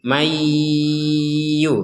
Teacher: mayyu ini plus dengung ya. Tidak sekedar masuk tapi dengung.